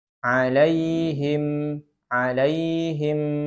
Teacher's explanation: Ada sedikit dengung ketika huruf mim disukunkan.